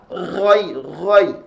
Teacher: Gai Gai ada bunyi dengkuran itu huruf ghain